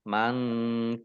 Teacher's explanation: nun sukun bertemu dengan huruf kaf, bacaan ikhfa dibaca samar-samar. Kaf fathah alif mat tabi'i panjang 2 harokat.